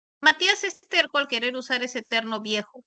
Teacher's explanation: Terco es oclusivo, pero terno es nasal.